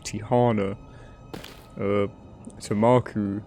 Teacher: The stress is always on the second syllable.